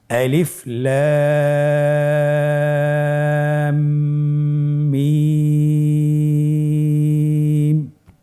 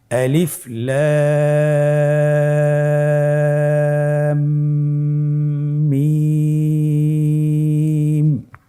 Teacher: লামের উপর মোটা চিহ্ন এবং মিমের উপর মোটা চিহ্ন এবং রয়ের উপর মাদের হারকত রয়েছে। তো আমরা লামকে 4 আলিফ টেনে পড়ব, মিমকে 4 আলিফ এবং রকে 1 আলিফ।